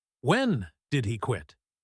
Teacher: Notice how she puts the stress on the word when.